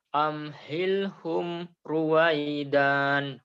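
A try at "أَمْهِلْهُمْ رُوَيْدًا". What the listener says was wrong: Pendek. Amhilhum ruwaidan. Ruwaidan.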